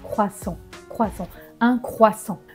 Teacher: On n'entend pas le T.